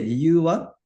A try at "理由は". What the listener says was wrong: make sure your li is actually longer than you're saying it. Yeah, and it's 理由は, yeah, you were turning it into 理由は, like a two more, 理由. Yeah, but straight, flat. Yeah, you don't want to come down. The whole topic part, 日本語を勉強している理由は is all flat.